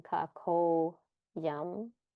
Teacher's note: So this visarga became, or aha became an o, and this initial a was elided, and so it has a little apostrophe or the avagraha here, and it becomes kako yam.